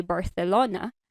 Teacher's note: for a Spanish accent so the way that they say Barcelona you would see um a lot more tongue sticking out